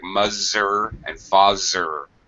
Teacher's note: Sounding like a Z. I can tell your tongue is not coming out of your mouth because it sounds like muzzer and fazzer.